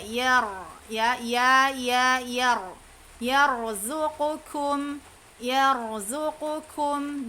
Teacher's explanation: Ya tidak tebal, ya, yang tebal hanya ro-nya saja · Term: tafkhim